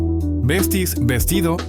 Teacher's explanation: La S final se pierde o se aspira.